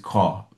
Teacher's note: Ils disent cor et tu n'as même pas l'impression que le R est prononcé. Donc en règle générale, en anglais américain, les R ne se prononcent à la fin des mots.